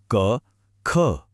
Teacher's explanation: इसकी सारी आवाजें गले के एकदम पीछे से, कंठ से आती हैं।